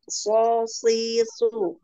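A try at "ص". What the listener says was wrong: Kurang diangkat. So, so.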